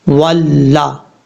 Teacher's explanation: اور الف کو جو ہے نہیں پڑھیں گے، واؤ کو پڑھتے وقت ہونٹ گول کر کے پڑھیں گے